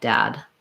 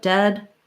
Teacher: ah is more open e is more central